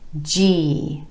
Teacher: together F and G there's that e vowel sound again G starting first with the jazz in joke consonant going into the e vowel sound